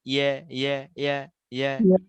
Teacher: জিহ্বার মধ্যখান এবং তালু, উপরে যে তালু রয়েছে এর সাথে কিন্তু একদম লাগে না, একদম লাগে না, লাগে না।